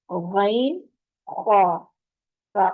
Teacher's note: زبان کے پچھلے حصے کو اوپر کی طرف بلند کرتے ہوئے موٹی آواز سے غین اور خا ادا کریں گے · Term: حروف حلقی